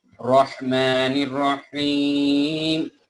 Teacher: হাটা গলার ভেতর থেকে বলতে হবে